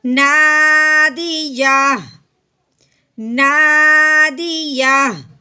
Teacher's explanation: ہم نے وقف کی صورت میں ہا کو ساکن کر دینا ہے